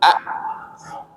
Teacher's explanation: Jadi pada sukun A bacanya. Ketika mengucapkan hamzah yang sukun itu pita suaranya tutup.